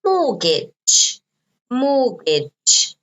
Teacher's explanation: notice you don't pronounce the T